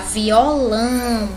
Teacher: A sílaba que tem aqui o tio, a gente pronuncia mais nasal. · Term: som nasal